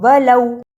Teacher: ولو، اسے ولو لمبا نہیں کرنا، یہ حرف لین ہے، اس کو جلدی پڑھتے ہیں